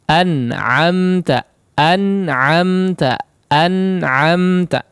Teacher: Sangat sedikit sekali kadar gunnahnya, singkat, ya, tidak berlama-lama